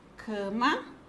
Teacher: É a penúltima sílaba. Ela é uma paroxítona, porque a penúltima sílaba é a sílaba tônica